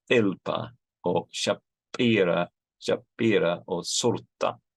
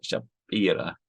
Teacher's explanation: the Syrian Christians of Urmi have these unaspirated stops, so they say things like shapira, but the Jews of Urmi don't.